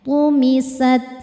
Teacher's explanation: Dari segi angin sifatnya hamas, sat. Untuk ta yang sukun, suaranya dulu keluar, baru terakhir anginnya